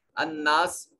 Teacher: نون مشدد ہے، غنہ واجب ہوگا